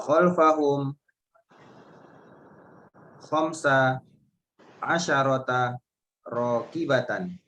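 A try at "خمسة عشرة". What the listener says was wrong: Khamsa asyrata. Sanya disukun ya.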